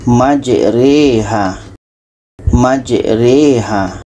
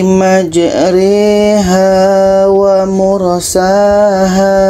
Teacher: sekarang bagaimana cara membaca bacaan imalah ini yaitunya tadi adalah memeringkat yang asalnya dibaca Maja Roha di sini ada Alif kecil maka kita miringkan menjadi majeriha